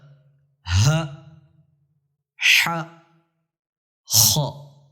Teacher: اب خ حلق کے اوپر والے حصے سے ادا ہوتی ہے، ح حلق کے درمیان سے ادا ہوتی ہے، اور ہ حلق کی انتہا سے آخری حصے سے ادا ہوتی ہے۔